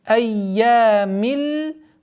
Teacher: После удвоения звука я долгота в размере 2 огласовок фатха.